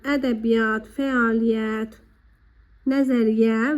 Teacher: y əsasən iyat, iya şəklində olanda y'lardan biri düşür və bir y kimi tələffüz olunur